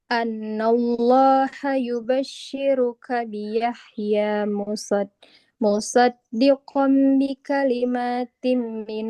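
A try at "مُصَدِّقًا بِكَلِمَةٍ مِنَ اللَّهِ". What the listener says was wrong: Mimnya enggak panjang. Musaddiqam bi kalimatim. Mimnya fathah, tidak ada alifnya. Ini enggak boleh dibaca panjang.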